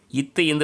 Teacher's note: மேல்வாய் பல்லின் அடி, நாக்கின் நுனி